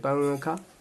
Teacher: پنکھا کو کس طرح سے بولتے ہیں پنکھا، ناک میں آواز آ رہی ہے، اسی طرح سے اخفا ہوتا ہے